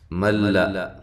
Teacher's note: لام کو باریک ادا کرنا ہے، یہ موٹی نہ ہونے پائے